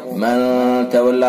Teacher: मन तवल्ला नून साकिन के बाद इख्फा के 15 हर्फों में से ता है, लिहाजा इख्फा हकीकी होगा